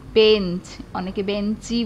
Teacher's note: শব্দের শেষে একটা স্বরধ্বনি আসছে, সেটা হচ্ছে গিয়ে আমার অন্তঃস্বরাগম